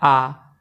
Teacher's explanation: इसी तरह से जब हम विवृत देखते हैं यानी पूरा खुला, तो पूरा खुला सिर्फ एक ही अक्षर बोला जाता है, वो होता है आ, और कोई अक्षर नहीं है जिसमें मुख पूरा हमारा खुला रहता है। तो आ जब हम बोलते हैं तो हमारा मुख पूरा खुल जाता है